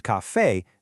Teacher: if the word is café, the stress is on the end, breaking the natural rule